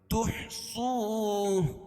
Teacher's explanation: واو ساکن سے پہلے پیش ہو تو وہ مدہ اس کو 1 الف کے برابر کھینچ کے پڑھیں گے